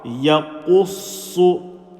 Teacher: Ya with a fatha, Ya, Qaf with a dhamma, Yaqu, Sad with a shadda and a dhamma, so it's going to be Qussu, Yaqussu. Qaf and Sad full mouth, Ya empty mouth.